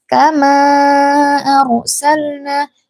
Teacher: mad jaiz munfasil yang panjangnya empat harakat karena ia adalah mad yang bertemu dengan hamzah dalam dua kata. Enggak boleh kurang, enggak boleh lebih ya.